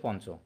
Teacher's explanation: চ, ছ, জ, ঝ এই বর্ণগুলোর যদি পূর্ব অবস্থায় বসে ইয়, তখন ইয় হয়ে যায় নয়ের মতো।